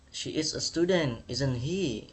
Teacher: Ini nadanya itu tone-nya naik di akhir kalimat. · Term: rising tone